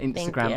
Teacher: emphasis on the last syllable of Instagram